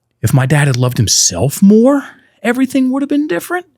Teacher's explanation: It went up at the end. It's called uptalk.